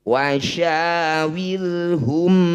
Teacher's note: ro sukun didahului kasrah sama-sama dibaca tarqik atau tipis Wid Fid wasyawirhum Amri ketika dihentikan huruf ro ini tetap dibunyi